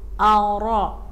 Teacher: Ara, ro-nya tebal karena berbaris fathah